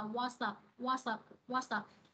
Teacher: Thì một từ mà kết thúc bằng một phụ âm và từ tiếp theo bắt đầu bằng một nguyên âm thì cái phụ âm của âm đầu tiên á, của từ đầu tiên á ha, nó sẽ nối với cái nguyên âm bắt đầu của từ tiếp theo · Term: nối âm